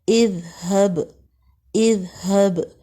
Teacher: Next دیکھیں اذہب، با کے اوپر ساکن ہے، کلکلا ہوگا، یہ حروف کلکلا میں سے ہے، اذہب۔ ذال کو ادا کرتے ہوئے زبان کو تھوڑا سا دانتوں سے باہر نکالیں گے، سرے سے لگائیں گے